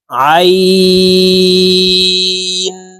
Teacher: না আইনের উচ্চারণ হামজার উচ্চারণ করে থাকি আইন এভাবে পড়ে থাকি আইনের উচ্চারণ হলকের মধ্যখান থেকে চাপ দিয়ে পড়তে হবে